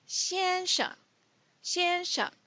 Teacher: Mr. in Mandarin Chinese is 先生, 先生, and sheng is neutral, 先生. 先生means firstborn.